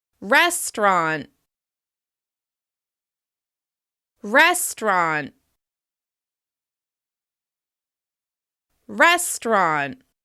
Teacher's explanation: This word is sometimes pronounced with 3 syllables, and sometimes we drop that middle syllable. When we say it with 2 syllables, it's pronounced restaurant. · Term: dropped syllable